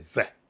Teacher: So like he had problems with the TH sound, the. He would say ze,